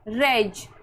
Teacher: रेज में श को ज पढ़ रहे हैं।